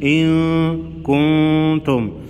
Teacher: ان کنتم دونوں نون ساکن پر اخفاء حقیقی ہوگا